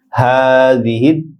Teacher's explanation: হাদিহি ছোট হা স্বাভাবিক উচ্চারণ এক আলিফ লম্বা হবে